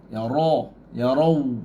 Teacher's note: Ra tebal. Ra baris atas, ra tu tebal, tafkhim.